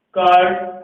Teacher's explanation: आर silent रहता है उच्चारण करते समय, यानी नाम मात्र बोला जाता है जो स्पीकिंग में बाहर हमें सुनाई नहीं देता